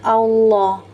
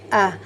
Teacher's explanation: Huruf fathahnya bervokal o, bunyi o. Padahal bunyinya fathah ya, ah.